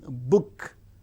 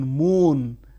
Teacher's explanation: Bilabial, the active articulators are the two lips